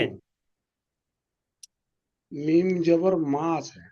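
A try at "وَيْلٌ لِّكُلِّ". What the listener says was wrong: তা মিম পেশ বলছেন কেন? তা পেশ বলছেন কেন? ওয়াইলুল্লি কুল্লি, এইটা শব্দটা ওয়াইলুল্লি কুল্লি।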